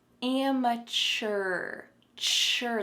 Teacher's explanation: There's a strong CH sound in the middle of this word. Amateur. I also want you to be able to have a strong R sound at the end.